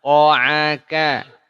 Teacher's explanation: Ain bukan dari hidung. Salah. Tapi dari tengah tenggorokan.